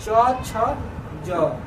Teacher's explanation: ज का उच्चारण स्थान कहाँ से होगा, तालु से।